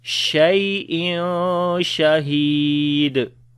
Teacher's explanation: After the tanween, the next is sheen. We make ikhfa here. We hide the sound of noon and we long. And he we long due to yamata. · On the dal we make qalqala.